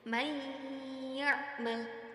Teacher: maka cara membacanya yaitu harus dengan mendengung Adapun panjang dengungnya yaitu sekitar dua harakat atau dua ketukan · di situ terdapat nun sukun bertemu dengan Ya maka harus dibaca dengung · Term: idgham bigunnah